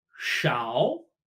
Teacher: A lot like few, but rising tone.